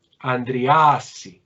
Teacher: Mucha atención, cuando se cayeron las dos consonantes, alfa, que era breve, se vuelve larga por compensación de la caída de las consonantes